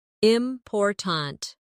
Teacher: in the word important, we stress the second syllable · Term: word stress